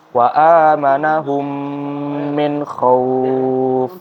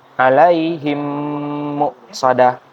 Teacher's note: pada kata wa amanahum di situ hum ada mim sukun, lalu setelahnya ada mim lagi, min khauf. Jadi di situ kita harus dengungkan seperti kita sedang membaca gunnah. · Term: idgham mimi